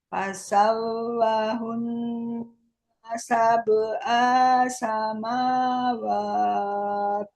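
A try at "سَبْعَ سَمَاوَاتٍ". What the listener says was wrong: Sab'a, A-nya pendek.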